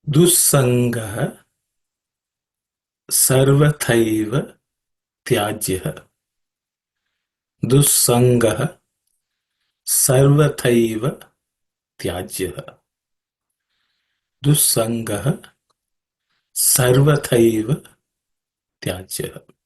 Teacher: Dussangah does not have any aspirated consonants.